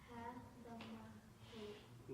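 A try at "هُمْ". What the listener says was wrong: No. Remember, after the ha, there's sukoon. So what do you do when there's sukoon? You join. Ha. Dhamma.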